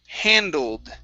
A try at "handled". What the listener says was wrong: Okay, give me a D at the end.